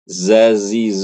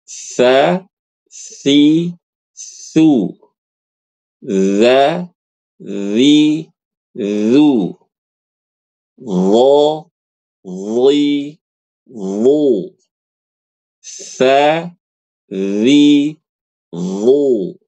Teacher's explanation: fokusnya adalah punggung lidah depan dan dua gigi seri atas. Ya, jadi ketika baca ujung lidah kita tuh keluar sedikit. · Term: huruf tsa, dza